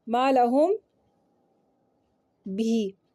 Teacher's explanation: میم ساکن کو ادا کرتے ہوئے دونوں ہونٹوں کو اتنی نرمی سے ملائیں گے کہ ہونٹوں کے درمیان معمولی سی جھری سپیس باقی رہے گی، ہلکی سی ایک سپیس باقی رہے گی. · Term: اخفاء شفوی